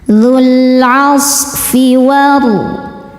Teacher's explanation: Sodnya berdesis ya karena sod punya sifat sofir, berdesis seperti suara angsa.